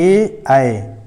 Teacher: ए आए तो कंठ और ताल का मिक्स हो रहा है, तो यहाँ पे कंठ तालत्व हो गया।